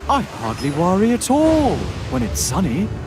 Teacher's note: he gives him a very breathy voice he always sounds like he's exhaling whenever he talks